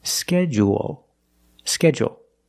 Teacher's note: in both pronunciations, we end with a dark L because the L is after a vowel at the end of the word